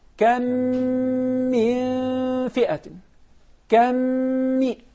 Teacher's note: So what do? We merge the first meme into the second meme and apply the ghunna.